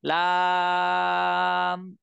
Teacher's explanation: লাম উচ্চারণ করতে 3 আলিফ টেনে পড়তে হয়